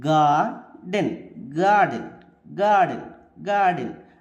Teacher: గా అంటే స్ట్రెస్ ఉంది. డెన్ నో stress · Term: ట్రకియక్ మీటర్